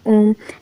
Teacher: तीन मात्रा का समय लगता है इसमें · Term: प्लुत स्वर